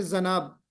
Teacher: بعض علاقوں میں جیم کو زیڈ کی آواز سے بولتے ہیں، جی بولتے ہیں تو کہتے ہیں جی، جناب کو بولتے ہیں زناب، ہے نا.